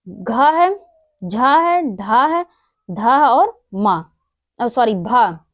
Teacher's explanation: ये हमारे सघोष महाप्राण हैं